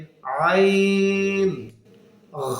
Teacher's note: আইন হলকের মাঝখান থেকে আমাদের উচ্চারিত হবে